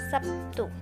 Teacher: bunyi B berubah menjadi P sebagian akibat dari pengaruh bunyi t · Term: asimilasi fonemis